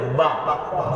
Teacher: দুই ঠোঁট শুকনায় শুকনায় ধরে ছেড়ে দিতে হবে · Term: বার উচ্চারণ